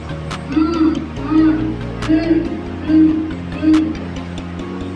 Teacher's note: Pailong na may tinig.